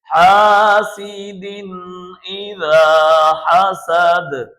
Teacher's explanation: تنوین کے بعد حروف حلقی میں سے حمزہ آیا ہوا ہے، تو ہم یہاں پر تنوین کو ظاہر کر کے پڑھیں گے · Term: اظہار